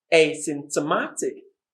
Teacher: the secondary syllable is on simp the primary syllable is on ma